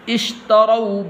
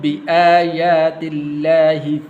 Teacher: یہ واو حروف لین میں سے لمبا نہیں کرنا